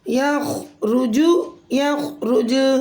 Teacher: خو کلمے کے درمیان میں ساکن ہے تو اسے موٹا پڑھیں گے